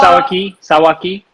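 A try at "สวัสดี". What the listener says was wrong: sawatdi with the D,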